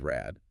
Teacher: It's neutralized. >> So even if the word is spelled with a D, you say it like a T. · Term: neutralization